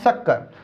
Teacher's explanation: जब हम इसका उच्चारण करते हैं तो इसका उच्चारण करते समय हमारी जीभ तालू से स्पर्श होती है, इसलिए इसे हम तालव्य स भी कहते हैं।